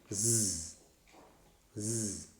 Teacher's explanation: Yeah, keep your fingertips on the throat and say Z. Yes, vocal cords are vibrating. Yes, so that's why it is a voiced fricative. But moreover, it is alveolar.